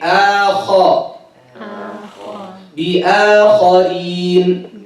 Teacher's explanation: the hamza is light, the kha is heavy